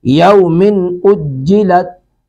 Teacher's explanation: یومن نون کی آواز کو ظاہر کریں گے، ظاہر کر کے اس کو ادا کیا جائے گا، یومن اجلت۔